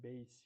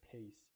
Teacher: As you can see, we don't push the B sound as much, but we push the P sound when we say pace